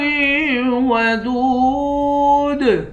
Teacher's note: دال کو واو کے ساتھ ملا کر واو کو ایک الف کے مقدار کھینچ کر پڑھیں گے۔ آخر میں حروف قلقلہ ہے، یہاں پر قلقلہ کریں گے۔